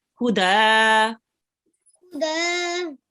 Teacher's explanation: if we stop here, we will just be reading the tanween as a fatha ishbaya.